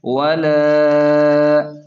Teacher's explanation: واو زبر و، لام الف زبر لا، لام پر مد بھی ہے تو 3 الف کے برابر کھینچ کر پڑھیں گے۔ ولا، اس طرح۔